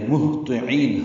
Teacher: ہا ساکن ہے، اس پہ ہمس ہوگا. اقصی حلق سے آواز نکالیں گے اور سانس جاری رکھیں گے، اس کے پڑھتے ہوئے تو پر پڑھیں گے.